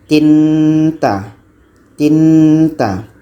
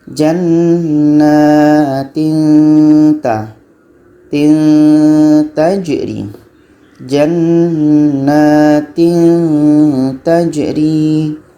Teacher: Jadi macam ada bunyi sembunyi, bunyi-bunyi samar. Di antara bunyi tanwin dengan ta ni ada bunyi samar-samar. Seolah-olah ketika kita sebut tanwin ini sudah masuk ke ta.